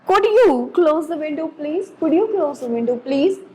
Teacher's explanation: जब हम किसी को रिक्वेस्ट करते हैं तो हमारी इंटोनेशन क्या उससे होती है, बहुत पोलाइट होती है और हमारी पिच जो होती है वो लो होती है